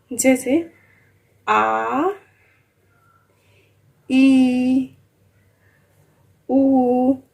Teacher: ये दीर्घ स्वर होता है, मतलब बड़ा, इससे डबल टाइम लगता है, इसमें 2 गुना समय लगता है